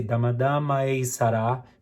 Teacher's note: try not to re-attack the a in order to make it a different word. So it should be one note only.